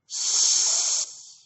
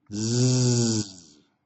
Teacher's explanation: The S sound is a voiceless sound. That means your vocal cords inside your throat are not moving. The Z sound, zzz, you can feel something's moving or vibrating inside your throat. We call that a voiced sound.